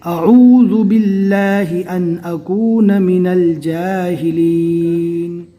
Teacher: الف کو نارمل پڑھنا ہے اور عین کو اچھی طرح حلق سے ادا کرنا ہے